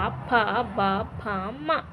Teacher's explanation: ಅಂದ್ರೆ ತುಟಿಯ ಸಹಾಯದಿಂದ ಹುಟ್ಟುವುದರಿಂದ ಓಷಸ್ಟಿಯಾಕ್ಷರಗಳೆನ್ನುವರು